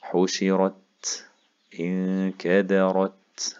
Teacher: عندي بقى التاء الساكنة نوضح فيها الهمس